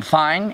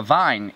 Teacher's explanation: The difference between being fine and being a vine is a voiced fricative.